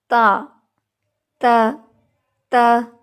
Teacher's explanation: تا کی جو کوالٹیز ہے وہ ہے اس میں شدت ہے، اس میں سختی ہے · یعنی زبان کی جو نوک ہے اور دانتوں کی جو جڑ ہے وہ آپس میں سختی سے ملتے ہیں · دوسری یہ چیز کہ تا میں بے شک سختی ہے، لیکن تا میں جب تا کو ہم ادا کرتے ہیں تو آخر پر تا کے مخرج میں ایک تھوڑی سی کمزوری آ جانے کی وجہ سے اس میں ہمس آ جاتا ہے